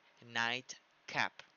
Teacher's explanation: Night cap termina en T y después pisa una K. La T es una plosiva alveolar.